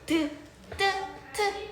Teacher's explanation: 미음 비읍 쌍비읍 피읍 피읍이 있고 잇몸 소리 같은 경우에는 치조음이라고도 해. 혀끝과 윗 잇몸이 닿아서 나는 소리다